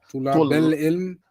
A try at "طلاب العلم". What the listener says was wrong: ولكن where's the shadda? It's not طلاب, it's طلاب. It's طلاب. Like kuffar. Everything on that is a jama'. That's a scale for jama'.